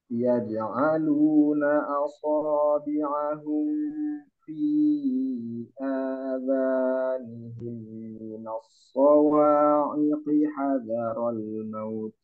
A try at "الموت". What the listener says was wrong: Maut dipanjangkan. Nah, itu namanya mad layyin ya atau mad lin. Nah, dia walaupun maut tapi harus dipanjangin. Maut.